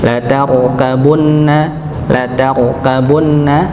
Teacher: Latabunna ada huruf ro yang sukun yang sebelumnya dengan huruf yang fathah. Maka dibaca tebal rnya